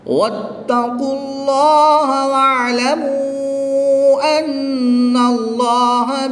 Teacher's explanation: اس میں جلالت اللہ عز و جل کے لام سے پہلے حرف پر زبر ہے، اور یہاں پر اس میں جلالت اللہ عز و جل کے لام سے پہلے حرف پر پیش ہے، تو ان دونوں لاموں کو پر یعنی موٹا پڑھیں گے